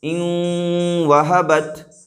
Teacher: تو حمزہ کو واو سے ملا رہے ہیں، لیکن اس طور پر ملا رہے ہیں کہ غنہ ہو رہا ہے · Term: ادغام مع الغنہ